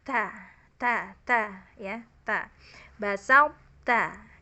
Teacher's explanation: Jadi tadinya to tebel lalu ta tipis. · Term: idgham naqis